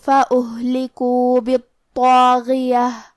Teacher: کلمت فأہلکوا میں یہاں ہا ساکن ہے لہذا ہمیں ہا کو ظاہر کرنا ہے اور ہا کی ادائیگی حلق کے نیچے والے حصے سے ہے.